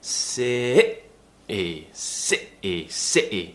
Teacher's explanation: s s sity so that's how we do the glossal te it's tightening the throat really tensing it and cutting a sound out to replace the T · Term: glottal te, glottal T